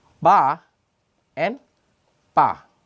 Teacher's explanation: There is more phonation or vocal cord vibration in ba than pa.